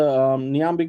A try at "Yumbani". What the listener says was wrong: Yumbani. Just act like the N is not there. Yumbani.